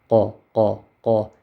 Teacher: It's very clear and clean. It doesn't make a scratching sound. So here closely I say Qa, qa, Qaf. · Each letter has its own special place of saying, or makhraj. So Qaf, you say it from the last part of your mouth at the upper end